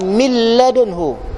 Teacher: Jadi kita baca tak boleh baca min, mil. Ada sabdu yang tegas, mil ladunhu. Mana ada bunyi nun dah? Tak bunyi lah nun. Bunyi lam